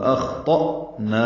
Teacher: اخطأنا خا پر ہے، موٹا کریں گے، تو بھی پر ہے، حمزہ ساکن جھٹکے سے ادا ہوگا